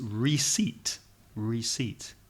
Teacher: you see it the word is ar e SI e IPT the pronunciation has nothing to do with the spelling the P is silent